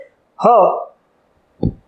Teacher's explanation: અને મરમર વ્યંજન. હવા કોઈ પણ પ્રકારના ઘર્ષણ વિના બહાર નીકળે છે. હવા ક્યાંય રોકાતી નથી અને બહાર નીકળે છે